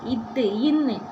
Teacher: மேல்வாய் பல்லின் அடிய நாக்கோட நுனி பொருந்துறதுனால பிறக்குது.